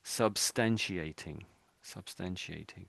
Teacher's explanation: the T turns into an S-y sort of a sound